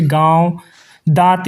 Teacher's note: अनुनासिक का उच्चारण नाक और मुंह से होता है और इनके उच्चारण में लघुता होती है।